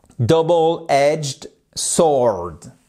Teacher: W ne se prononce pas